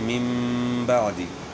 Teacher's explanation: نون جو ہے نا میم سے بدل گیا. اقلاب کا معنی ہے کہ بدلنا.